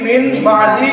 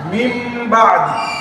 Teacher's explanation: বা হরফটি এসেছে। নুন সাকিনের পরে বা আসার কারণে এই নুন সাকিনটা মিম দ্বারা পরিবর্তন করেছে।